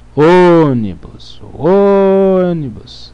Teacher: sílaba tônica é a antepenúltima portanto é uma proparoxítona